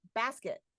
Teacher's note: The stressed syllable is the first syllable in that word. And that leaves the unstressed syllable with a reduced vowel sound.